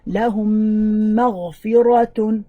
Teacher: When you have the meme, all you need to do, you want to make sure that you're indicating by stretching or lengthening the meme that has a shadda